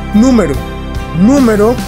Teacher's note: Número tiene el acento en la sílaba nu, o sea en la última, penúltima, antepenúltima sílaba, o sea que es esdrújula.